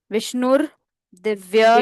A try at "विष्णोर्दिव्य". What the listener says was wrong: विष्णोर, ओ की मात्रा है ण के साथ। विष्णोर, विष्णोर दिव्य